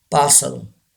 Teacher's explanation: Yes, R is silent. We don't pronounce R.